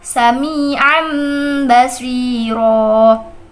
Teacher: menukar bunyi nun mati atau tanwin dengan huruf mim serta dibaca dengan dengung Adapun huruf iqlab sendiri yaitu hanya ada satu yaitu huruf ba